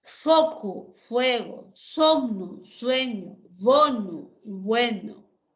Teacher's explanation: las vocales latinas e y o que son breves y tónicas pasaron a ser diptongos